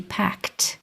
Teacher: that ED is sounding like a T, a voiceless T